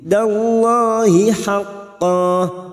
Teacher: Wa'dallah lam jalalah yang sebelumnya fathah kita baca tafkim.